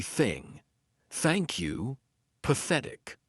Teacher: the unvoiced TH sound, which means our vocal cords are not going to vibrate, so it's going to be thing.